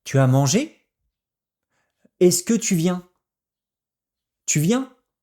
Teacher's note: Les Français posent leurs questions par intonation qui monte.